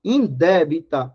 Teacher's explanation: Observe que indébita, a sílaba tônica está na antepenúltima, portanto, é proparoxítona.